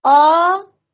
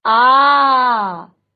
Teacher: ह्रस्व स्वर जिनके उच्चारण में हमें बहुत कम समय लगता है और यह है आपके दीर्घ स्वर जिनके उच्चारण में ह्रस्व की अपेक्षा दुगना समय लगता है